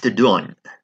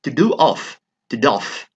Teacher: So a few sounds are elided, and that is telescoping.